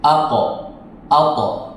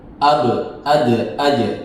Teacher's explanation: Jadi cara membacanya adalah dengan memantulkan huruf qof dan tho karena itu adalah huruf isti'la, pantulannya terdengar seperti 'o' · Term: qalqalah